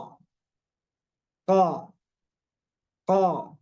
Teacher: merupakan huruf yang terletak di Pangkal lidah aqsal lisani yang dekat dekat Anang lidah dan dia bertemu dengan · ditarik ditarik pangkal lidahnya menyentuh ke langit-langit yang lunak sekali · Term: huruf q